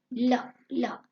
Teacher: इस प्रकार आगे अब देखो नंबर 4 है पार्शिवक। ध्वनियां उच्चारण करते समय जीभ का अगला भाग मसूड़े को छूता है। उसके दोनों ओर रास्ता खुला रहता है और हवा निकलती रहती है।